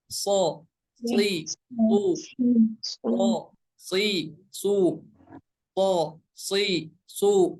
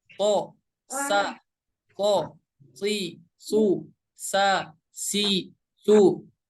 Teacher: huruf sod memiliki sifatnya tebal, sedangkan huruf sin memiliki sifat tipis. Jadi ketika membacanya untuk huruf sod itu dengan menaikkan pangkal lidah kita ke atas atau lidah bagian belakang kita akan ke atas.